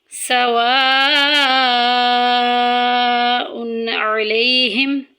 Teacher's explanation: سواء، دیکھیں ادھر الف مدہ کا قاعدہ جاری ہو رہا ہے، بڑی مد آ گئی ہے، یعنی کہ مد متصل آ گئی ہے، 2 سے 2.5 الف کے برابر ہم اس کو لمبا کریں گے۔ سواء علیہم، تقریباً 3 سیکنڈ تک ہم اس کو لمبا کریں گے۔